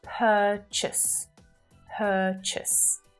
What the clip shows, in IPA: 'pɜ:t∫əs